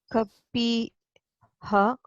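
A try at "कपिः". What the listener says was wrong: Kapihi, not ha. Kapihi, not ha. Visarga doesn't have the ha sound. It takes, remember, Visarga doesn't have any particular sound. It takes the vowel of the preceding vowel. Preceding vowel. It takes the sound of the preceding vowel. Kapi, e is there. Therefore, ihi.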